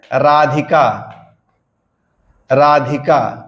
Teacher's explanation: राधिका में रा पर क्या होगा रा पर बलाघात होता है